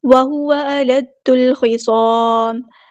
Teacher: دال کو ہم نے لام کے ساتھ ملا دینا ہے، حمزۃ الوصل ڈراپ ہو جائے گا. لام یہاں پہ لام کمریہ ہے.